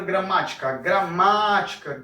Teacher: o ma é o que eu estico mais, é o que eu prolongo mais, então eu vou dizer que esse daqui, essa gramática, esse ma em gramática é a sílaba tônica, tá?